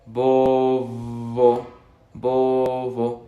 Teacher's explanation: En la segunda B hay aire que sale de entre los dientes.